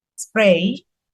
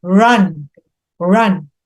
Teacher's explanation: R itu bisa berubah non voice atau tidak getar